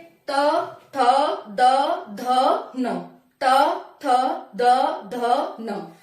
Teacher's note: फिर आता है तवर्ण, तवर्ण मतलब दांत, ये दांत का उपयोग होता है इसमें, जैसे तातकली, तातकली, हमारी जीभ और दांत दोनों का मिक्सर हो रहा है इसमें, हमारी जीभ दांतों से टच हो रही है · मूर्धा पे नहीं जाएगी, ऊपर नहीं जा रही, सिर्फ दांतों से टच हो रही है हमारी जीभ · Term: दांत वर्ण